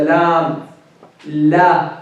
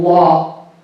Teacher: In the heavy, the tongue is curved, the back part is raised, and the tongue is curved from the middle. While in the light lam, the tongue is not curved. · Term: heavy lam